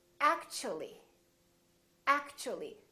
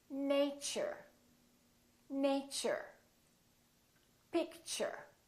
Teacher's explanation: So the T and U create a new sound, and it sounds kind of like ch. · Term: CH sound